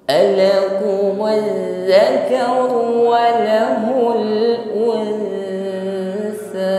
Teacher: Huruf dzal bertasydid, ditekan membacanya, namun jangan sampai tertahan karena sifat jar khawa bunyi hurufnya tetap mengalir.